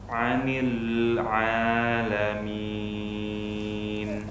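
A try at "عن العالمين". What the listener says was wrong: Baik, hati-hati di sini banyak lam yang sukun ya. Lam yang sukun antum masih tebal. Anil, tipis kan?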